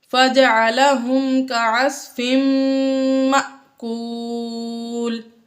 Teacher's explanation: یہاں پر بھی تنوین کے بعد میم آ گیا، اس لیے یہاں پر ہم نے غنہ کیا، اور آگے مأکول میں الف کے اوپر جزم آ گئی تو یہ حمزہ ساکنہ بن گیا، اور حمزہ ساکنہ کو ہمیشہ جھٹکا دے کر پڑھتے ہیں۔